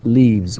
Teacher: we just add s here and we pronounce it Z